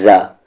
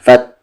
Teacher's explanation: زبان کا کنارہ اور سامنے والے دانت کا کنارہ